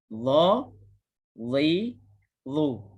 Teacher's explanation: Hujung lidah dikenakan dengan hujung gigi atas. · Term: huruf dha